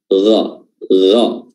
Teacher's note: Huruf ghain makhrajnya adalah adnal halq atau tenggorokan bagian atas